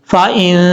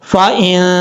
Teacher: تجوید کی اصطلاح میں آواز کو ناک میں چھپا کر پڑھنے کو اخفا کہا جاتا ہے، اور یہاں پر ایک الف کی مقدار جو ہے غنہ کریں گے، نون ساکن کا اخفا ہوگا